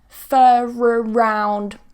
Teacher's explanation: So here, we're just going to use the weak form with a schwa, for around. Going to link with a r.